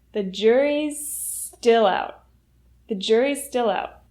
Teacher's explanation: the S at the end of juries will link to still because they both have the S sound